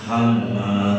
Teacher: Hamma tengorokan bagian tengah. Bunyinya beda tuh.